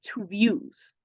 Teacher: the word two sounds shorter than the word views because views is a longer or stressed syllable